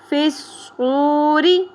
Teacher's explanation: را کی زیر باریک پڑی جائے گی